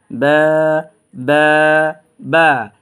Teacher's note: এই বা টা এক আলিফ টান দিব এবং দুই ঠোঁটের ভিজা অংশ থেকে উচ্চারণ করব